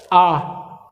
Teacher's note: पश्च स्वर आ, जीभ जा रही है आपकी जीभ के लास्ट के हिस्से में, तो उसके हिसाब से ये पश्च स्वर हो गए, ठीक है।